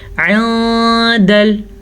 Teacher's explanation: میں نے نون کو کلیئر نہیں پڑھا کیونکہ اخفا کی وجہ سے · نون ساکن یا تنوین کی آواز کو چھپے ہوئے غنے کے ساتھ پڑھیں گے